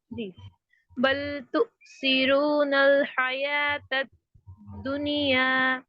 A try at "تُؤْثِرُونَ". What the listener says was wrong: تؤثرون میں را موٹا. اور دنیا دنیا دنیا نہیں. آپ نے تھوڑا سا کسرہ دیا ہے تو اس کو ہولڈ پہ رکھیے.